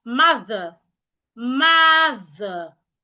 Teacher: ensure you put your tongue out because of the th. And remember when you're pronouncing the e r, do not open your mouth wide.